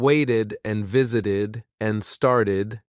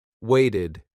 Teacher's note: in waited and visited and started, the ed sounds like e d with a small extra syllable.